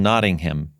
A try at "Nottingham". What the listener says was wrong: Well, here's a little tip. We don't pronounce the H, so it's Nottingham. Nottingham and Birmingham and things like that. So we don't say the Birmingham and Nottingham. Otherwise, we know that you're American and you ain't from around here.